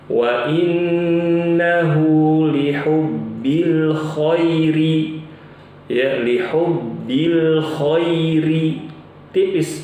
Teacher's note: Al Khair harusnya dibaca tipis